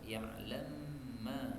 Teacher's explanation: Kemudian ayat 42 mim ketemu mim boleh idgham